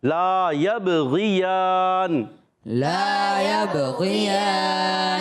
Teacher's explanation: قلقلہ ہوا، آواز لوٹ کر آئی · غین کا مخرج حلق کے اوپر والا حصہ